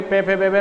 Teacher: दोनों होठ भिड़ेंगे, दोनों होठों का स्पर्श होगा, इसलिए इनका उच्चारण स्थान ओष्ठ माना गया है।